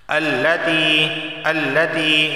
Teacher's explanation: یا ساکن سے پہلے زیر آیا ہے تو اسے ایک الف کے برابر کھینچ کر پڑھا جائے گا